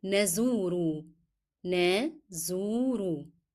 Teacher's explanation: This letter is carrying the combination. It is Dhamma and then followed by Waw. Then I want you to remember to lengthen the sound of U.